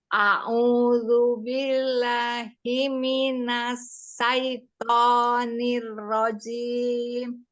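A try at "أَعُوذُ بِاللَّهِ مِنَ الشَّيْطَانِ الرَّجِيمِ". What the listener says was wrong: Itu huruf sin yang dibaca Umi. Minas syaiton. Minasya. Minasyaitoni. Ditahan, dia ada rawahnya. Ya, mengalir hurufnya.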